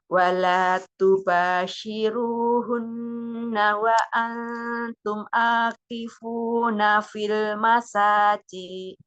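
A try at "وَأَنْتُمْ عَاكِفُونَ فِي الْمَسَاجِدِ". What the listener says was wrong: Wa antum akifuna fil masajid. Wa antum jangan tum'a. Selesaikan dulu mimnya.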